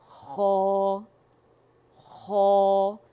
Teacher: میں سب اپنے اسٹوڈنٹ سے کہتی ہوں کہ آپ اپنا جو نیئر تھروٹ ہے آپ لوگوں کا زبان کی جڑ کے پاس, کیونکہ ہم زبان کی جڑ کو جو ہے اقص اللسان کو نرم تالو کے ساتھ لگاتے ہیں · اس میں ہونٹ گول نہیں ہوں گے